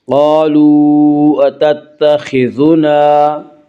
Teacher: خا کو پر پڑھیں گے، خا حروف مستعلیہ میں سے ہے